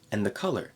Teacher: drop the D connect the N to the th